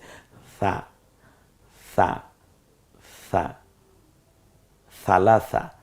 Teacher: নরম আওয়াজটা কিভাবে যেন করা যায়? জিহ্বার আগা সামনের দাঁতের আগার সাথে মিলিয়ে আপনি স বলুন, দেখবেন নরম হয়ে গেছে।